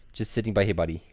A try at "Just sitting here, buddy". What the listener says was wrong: You added a word in there. You said just sitting by here, buddy.